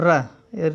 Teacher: र का क्या है, वात्सर्य है, वात्सर्य वर्ग का है। ये दंत मूल या मसूड़ों के माध्यम इससे बोला जाता है। ये र को जो है लुंठित वर्ण भी कहते हैं, ये विशेष ध्यान रखना है आपको।